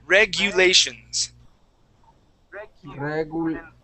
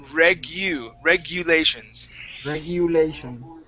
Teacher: the word regulations, this U, we're going to pronounce with an I in front of it, okay? So when we pronounce this word, we're going to say regu, and then lations.